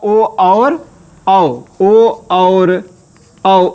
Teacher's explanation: तो कंठोष्ठ से आपका ओ और औ, ओ और औ उच्चारित हैं।